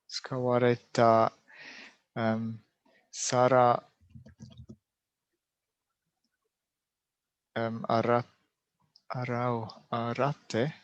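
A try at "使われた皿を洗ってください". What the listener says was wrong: Perfect. Exactly. Yes. Exactly this.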